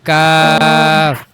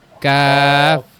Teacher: জিহ্বার গোড়া থেকে একটু আগে বাড়িয়ে তার বরাবর উপরে তালুর সঙ্গে লাগিয়ে কাফ।